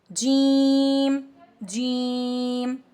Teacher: زبان کے وسط سے تالو سے جیم ادا ہوتا ہے